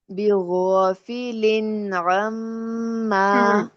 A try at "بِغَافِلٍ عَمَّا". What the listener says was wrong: نون تنوین آپ کا ہل رہا ہے. لن نہیں، لن لن کر کے پھر عما، لن عما کریے ذرا. تھوڑا سا لائٹ سا، ایک حرکت سے بھی لائٹ سا پوز دیں. بغافل عما. اس طرح سے لفظوں کو ہلانے سے روکنا ہے.